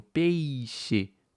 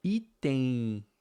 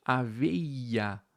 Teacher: Você tem uma vogal seguida de uma semivogal. Então você tem o peixe, percebe a boca fechando quando você fala, né? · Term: decrescente